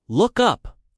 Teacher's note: the stress is on up.